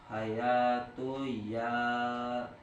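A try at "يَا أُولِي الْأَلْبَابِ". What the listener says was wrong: Ulil, pendek u-nya nggak ada sukun jadi pendek. Ya ulil.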